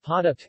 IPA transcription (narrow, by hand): poʊʔtʰa̰